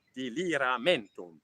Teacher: a nice word here with some long, unstressed vowels, which English people find really hard to say